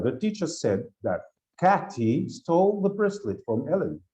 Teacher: وبعدين الانتونيشن بينزل لان this is like statement